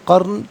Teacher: نون ساکن کی ہلکی سی آواز قرن وقف کی صورت میں۔ را ساکن ما قبل کاف پر زبر، را ساکن کو پر کر کے پڑھا جائے گا۔